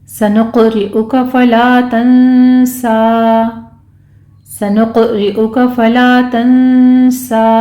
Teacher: सनुक़ में सीन सीटी की आवाज़ के साथ पढ़ेंगे, क़ाफ के ऊपर कलकला होगा